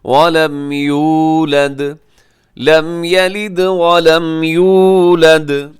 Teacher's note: اب یولد میں اسے تھوڑا سا لمبا کیجیے گا، اس میں واو مدہ ہے